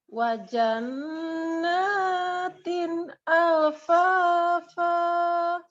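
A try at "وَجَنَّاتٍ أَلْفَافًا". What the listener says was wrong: Iya, natin itu masih lebih. Potong lagi, potong. Ya, sudah benar dinanya alfanya yang kelebihan. Alfa.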